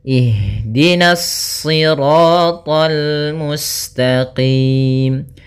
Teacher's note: Kemudian hati-hati meskipun to-nya termasuk huruf isti' dan huruf ibtbaq sehingga dia menebal surat to-nya, akan tetapi karena kita bertemu dengan huruf lam maka dia lamnya tipis, jangan ikut tebal, jangan tol itu tebal.